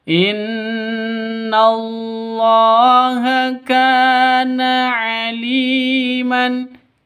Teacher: Kana, ka panjang 2 ketukan karena ada alif diawali dengan fathah. Alif sebelumnya fathah. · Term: mad asli